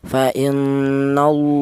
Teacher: Lafal Allah didahului huruf yang berharakat fathah dibaca tafhim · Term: tafkhim